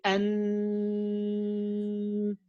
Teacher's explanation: with noon and meme, the oral part is totally closed, and I open the nasal cavity. With noon, I have my tongue.